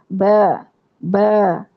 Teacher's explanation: ہونٹوں کے اندرونی گیلے حصے جو آپس میں مل کے جدا ہوں تو با ادا ہوتا ہے، اور اس با کو ادا کرتے ہوئے ہم نے ہونٹوں کو چیرنا ہے، یعنی اسمائل والے سٹائل میں لے کے جانا۔